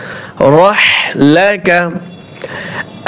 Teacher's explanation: র হা জবর রহ, হাই হদ্দি ছোট হা ফেস ফেস আওয়াজে বলতে হবে।